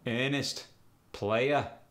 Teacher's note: The medial R and the terminal R are both dropped. For instance, earnest and player become earnest, player.